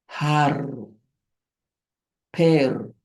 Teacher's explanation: the R, the double R, it's pronounced with a strong trill